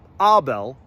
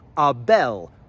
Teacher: Abelo is shortened to abel. Bel still gets the emphasis, the stress.